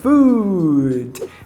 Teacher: Foot é com o, ferradura de cavalo, um U metido e curto, o. E food é com o U de bico e prolongado, food.